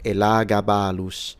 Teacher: So in English you can say Elagabalus, but if you want to say it in classical Latin, it's Elagabalus with a retracted S